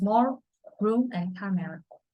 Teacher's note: The soft palate is lower and escape through the nasal cavity. Place of articulation is labials, formed with the two lips.